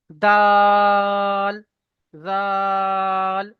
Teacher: দাল কিন্তু তিন আলিফ পরিমাণ টান দেখেন [মিউজিক] দাল এরকম তিন আলিফ পরিমাণ টান দিয়ে পড়বেন ঠিক